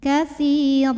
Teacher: Baris 2-nya jadi 1 dan kita panjangkan sepanjang 2 harokat ya. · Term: mad iwad